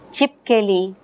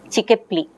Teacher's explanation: Chipkeli is pronounced by the child as chikepli. So there is a reversal of the order of the constituents, order of the phonemes within words. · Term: Metathesis